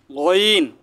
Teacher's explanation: গইন গলার শেষ ভাগ থেকে একটু মোটা করে গইন